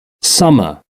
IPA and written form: ˈsʌmə (summer)